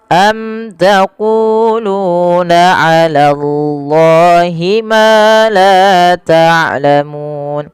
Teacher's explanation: Allah bila dia fathah dengan tebal ya